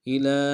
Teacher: لام کے اوپر کھڑا زبر ایک مقدار میں کھینچیں گے